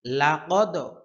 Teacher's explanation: কলকলার বিষয়টা হচ্ছে কম্পন সৃষ্টি হয় আর কি প্রতিধ্বনি হয়